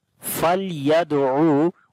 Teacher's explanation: On the dal we make qalqala, which is the weak qalqala, as qalqala letter is coming with sukun sign in the middle of the word.